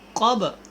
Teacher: قاف کو موٹا پڑھیں، با کے اوپر آپ نے قلقلہ کرنا ہے